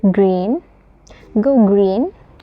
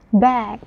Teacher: The G sound is a voice uh aer posive similar to the C but with G your uh vocal cords vibrate